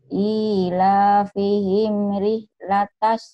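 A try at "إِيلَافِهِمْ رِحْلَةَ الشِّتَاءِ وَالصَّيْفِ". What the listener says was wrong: Sinnya mana? Sinnya mana? Ila fihim rihlatas syita'i was-shaif. Soalnya jangan angin wasyaif biasa aja. Wasyaif biasa aja. Sinnya mana? Rihlatas syita.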